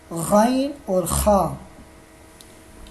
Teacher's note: ان دونوں کا مخرج یہ ہے کہ حلق کے ابتدائی حصے سے ادا ہوتے ہیں